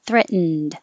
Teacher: for past tense i would say threaten and then the d you don't make any other sound between the n and the d